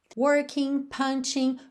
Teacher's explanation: porque a gente não pronuncia o G dessa terminação ING